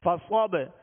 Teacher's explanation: قلقلہ، کیونکہ حروف قلقلہ 5 ہیں، قاف، طا، با، جیم، دال، جب یہ ساکن ہوں تو ان پر قلقلہ ہوگا، یعنی ان کی ادائیگی میں آواز میں جنبش ہوگی، آواز لوٹتی ہوئی آئے گی۔ فصب، صاد کو پر اور موٹا پڑھیں گے، صاد میں سیٹی کی آواز پیدا کریں گے